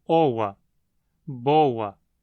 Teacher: a sequência OA, como em boa, costuma soar como OA, boa, com uma aproximante inserida